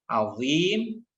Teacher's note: Azim, azim ya, tidak azim ya, tidak ada desisan di sana. Azim ya, dibaca tebal meskipun kasroh ya, meskipun posisinya kasroh. Nanti ada urutan tafkhim ya, ada urutan tafkhim, dan urutan yang terakhir adalah kasroh, tetapi tetap kasrohnya huruf-huruf isti'ala itu tetap dibaca dengan tafkhim atau dengan tebal.